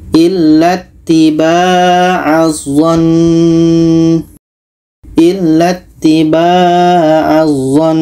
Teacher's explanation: wajibul gunah dengung maka wajib dengung dulu contoh illattibaazan illatibaazzon dan kita dengungkan dulu karena Nun tasydid hukumnya adalah wajibul ghunnah